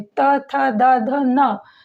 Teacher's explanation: जब त, थ, द, ध, न बोलते हैं तो हमारी जीभ जो है वो किससे टकराती है? दांतों से। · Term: दंत्य